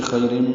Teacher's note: تنوین کے بعد میم آنے کی وجہ سے خیرم، یہ ادغام ہے غننے کے ساتھ